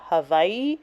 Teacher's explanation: native Hawaiian speakers, I hear them say Hawaii, where the W is pronounced with the V.